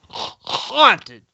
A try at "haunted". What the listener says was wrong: You didn't even make the H sound. You just went.